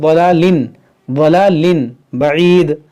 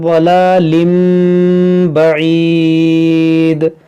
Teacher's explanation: اس تنوین کے اندر جو نون ساکن ہے اس کو اس میم سے بدل کر پڑھیں گے